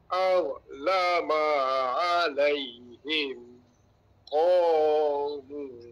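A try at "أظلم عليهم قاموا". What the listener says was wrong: Okey, boleh diperikatkan lagi dah pada huruf za tu.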